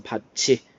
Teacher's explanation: 그 다음에 앞에 받침이 티읕 들어가 있고, 요 티읕이 뒤로 연음되면서 이하고 결합되는 과정 속에서 치읓으로 바뀐다